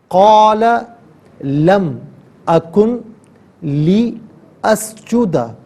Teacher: لم اکن میں نون ساکن ہے، اسے لی اسجدہ کے لام کے ساتھ ملائیں گے اور لام کی آواز کو ادا کیا جائے گا